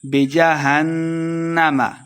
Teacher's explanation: نون مشدد ہے غنہ کر کے پڑھیں گے